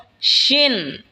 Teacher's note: শিন জিহ্বার মধ্যখান তার বরাবর ওপরে তালের সঙ্গে লাগা উচ্চারণ হবে শিন।